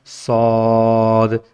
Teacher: ये सौद whistling letter भी है और हैवी भी है